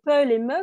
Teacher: ce sont des bilabiales, c'est-à-dire des sons très simples, les pe, les me qu'on fait avec les lèvres